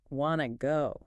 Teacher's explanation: Wanna is that classic reduction of want to into one smooth unit.